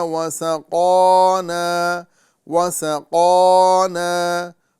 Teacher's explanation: سین کو باریک کریں گے اور قاف کو پر کریں گے